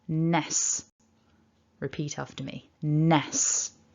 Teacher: a n up in the nose, a short e, and then a s, a hissed s